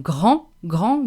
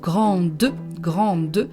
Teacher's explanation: we don't pronounce the D at the end, but grande, we pronounce the D at the end because there is a vowel after it.